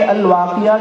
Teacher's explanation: گول تا پر وقف کرنا ہو تو اس کو ہائے ساکنہ سے بدل کر پڑھیں گے